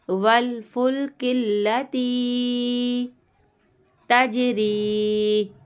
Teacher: जीम की आवाज़ पलट कर आएगी